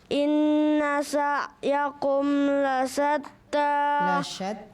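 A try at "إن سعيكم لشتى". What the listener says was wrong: Shinnya di coba inna sa'yakum lasyatta.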